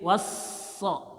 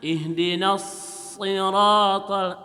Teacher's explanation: Itu sudah ada shad, was-sha. Shad itu walaupun tidak ada tasydid ada desisnya. Apalagi ada tasydid, was-sha.